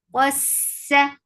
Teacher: Sin will get sifa of rakhawa. It is light and it has safir. Qas, for fatha open jaws.